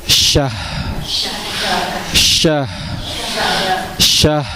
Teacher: Kita bunyikan dulu huruf H-nya. Jangan sahar bacanya.